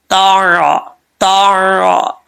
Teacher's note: साथ उससे थोड़ा सा नीचे लगाना है ठीक है तो ये ता बरीक पढ़ा जाएगा इसके लिए जुबान ऊपर उठाना भी लाजमी नहीं है